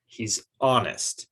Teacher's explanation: Okay, he's not getting much stress. And honest has two syllables, but the first syllable is getting the stress